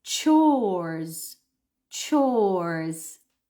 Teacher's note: c so not Co but ches ches you need to round your lips extend the vowel o it's a long o it's one vowel